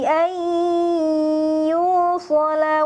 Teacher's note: bunyinya dimasukkan dulu ke hidung, kemudian ditahan selama 3 ketukan